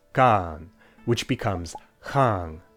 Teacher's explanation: They also started pronouncing ns as engs at the end of words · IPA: /xaaŋ/